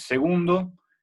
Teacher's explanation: palabra grave con acento en la segunda sílaba. Bueno, en la penúltima sílaba, perdón.